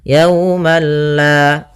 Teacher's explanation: di sini Ma maka yaumalla tapi perlu diingat bila gunah berarti tidak disertai dengan gunah sehingga langsung saja tidak boleh ditahan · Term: idgham